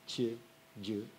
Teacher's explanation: D'ailleurs, la prononciation de ces deux sons est très proche des deux consonnes qui sont représentées par les intricciate en corse. Donc, ce sont des consonnes palatales, mouillées